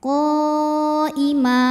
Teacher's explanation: apabila berhenti hukumnya Mad iwad karena ada tanwin fathah yang diwakafkan cara bacanya dipanjangkan mimnya dua harakat tanpa bunyi n